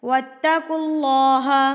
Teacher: اللہ سے پہلے اگر پیش ہو تو اللہ کو پر یعنی کہ موٹا کر کے پڑھا جاتا ہے